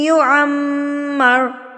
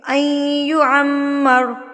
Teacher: تو یہاں پر ہم جو اخفا کریں گے، غنہ کریں گے تو وہ 2 سے 3 سیکنڈ کا ہوگا